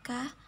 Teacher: konsonan yang dihasilkan dengan pangkal lidah dan langit-langit lunak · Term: konsonan langit-langit lunak